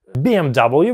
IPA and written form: ˌbiːem'dʌb(ə)ljuː (BMW)